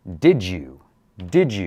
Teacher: a J for the D and Y sound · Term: J sound